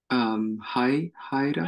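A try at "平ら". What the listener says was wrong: It's actually tai, the ta.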